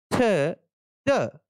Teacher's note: Teeth and tip of tongue से जिस consonant sound का आर्टिकुलेशन होता है उसे हम लोग डेंटल कहते हैं और इससे 2 साउंड निकलते हैं, थ, द।